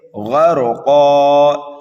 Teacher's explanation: قاف دو زبر قن، غرقن، یہاں پر آیت آ رہی ہے، ہمیں کرنا ہے وقف۔ وقف کریں گے تو یہاں پر دو زبر کو الف سے بدل دیں گے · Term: وقف بالابدال